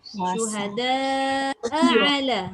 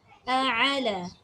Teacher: Hamzah keluar dekat pangkal halkum. Tapi ain keluar dekat tengah halkum. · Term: hamzah dengan ain